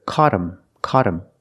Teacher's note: now that t is between vowels phonetically so it changes to a fast D